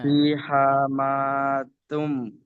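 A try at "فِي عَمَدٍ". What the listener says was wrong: ফি হা ফি হা নেই, এখানে আছে আইন আছে, দেখেন এটা হলো আইন, আইন।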